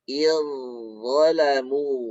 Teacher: Nah, bunyi dari zal ini kita idghamkan ke huruf dha. Jadi bunyi zalnya ini sudah tidak berbunyi lagi. · Zal bertemu dengan dha, ini makhrajnya sama. Zal ujung lidah bertemu dengan gigi seri atas, dha pun sama. Yang membedakan zal istifal sedangkan dha isti'la.